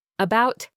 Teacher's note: Your mouth is barely open, your tongue is completely relaxed, and just sits in the center of your mouth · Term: schwa